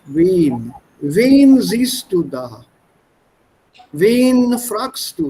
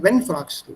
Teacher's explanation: You lengthen the vowel, the N is dropped.